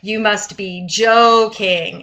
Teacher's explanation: it's like a kind of a long fall down and rise up